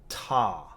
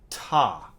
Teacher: the tongue moves up right behind the top teeth touches the gum with a little bit of strength